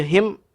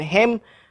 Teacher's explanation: pastikan kita baca him, bukan hem, pastikan him baris bawah.